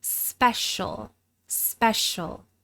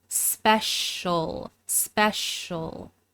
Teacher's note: These sounds come together to form a sh sound, and we really reduce that final vowel to the point where you really only hear the dark L sound.